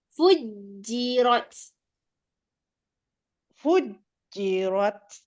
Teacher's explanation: Jim ada sabdu kita tekan lagi kat makhraj dia